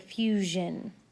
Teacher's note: And then z is a voiced fricative, as in the middle of the word fusion.